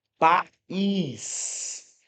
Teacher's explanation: Aqui você separa porque você percebe que na pronúncia esse i tem um som independente, tem um som forte, inclusive é um som mais forte do que o a